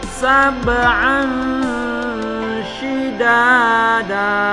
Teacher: Sab'an harus kedengaran kolkolahnya. Kolkolah itu huruf memantul.